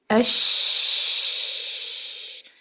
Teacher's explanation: دیکھیں آواز جاری ہو رہی ہے، چونکہ اس کے زبان کے درمیانی حصے میں اور ہارڈ پیلٹ کے درمیان میں ایک گیپ ہے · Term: شین